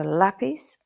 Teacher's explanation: close to the English letter L but with the tongue raised up higher in the mouth